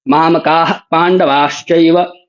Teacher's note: विसर्ग का उच्चारण मैंने पूरा नहीं किया। इसी को क्यों नहीं किया, क्योंकि आगे प है। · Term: उपधमानीय